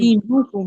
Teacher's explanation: तो फिर इसको जी खींच के पढ़ेंगे ना थोड़ा सा। جی ایک الف کی مقدار کھینچ کے پڑھیں گے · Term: या मद्दा